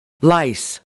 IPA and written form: laɪs (lice)